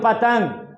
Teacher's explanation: पतंग फल जैसे बोलोगे तो वैसे ही ओठ क्या होगा, सट जाएगा। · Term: ओठ सटना